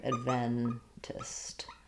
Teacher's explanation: It's going to be much shorter and more almost like an I sound, id or adventist. And that would have second syllable stress. My E then would be clear